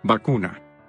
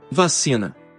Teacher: La V bilabial latina ha mantenido el mismo sonido en español, mientras que se ha vuelto labiodental en el portugués